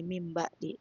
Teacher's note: Setelah pada kata ini nun sukun bertemu dengan huruf ba, maka bunyi nun berubah menjadi mim dan dibaca dengan gunnah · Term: iklab